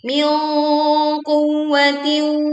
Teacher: nun sukun ketemu dengan qaf, tetapi suara yang ditimpulkan, sengau atau dengung yang ditimpulkan terdengar tebal karena qaf adalah huruf isti'la. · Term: bacaan dengung